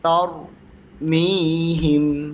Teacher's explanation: তার, ঠিক আছে। সিফাত হলো যখন তুমি তার বলবা, সঙ্গে সঙ্গে যেহেতু র সাকিনের ডানে জবর, সঙ্গে সঙ্গে মুখটা গোল করে দিতে হবে